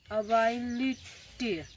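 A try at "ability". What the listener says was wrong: ना ही एबिलिटी। यहाँ कहा ई लगा जो मात्रा बदलत हो।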